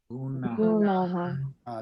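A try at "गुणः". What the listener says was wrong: There's another N sound here. There's a nasal N. Gunaha.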